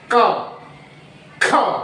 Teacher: क पे हमारा कागज नहीं हिलेगा और ख महाप्राण ध्वनि है तो इस पे हिल जाएगा